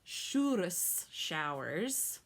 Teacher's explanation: i roll my r just a little bit there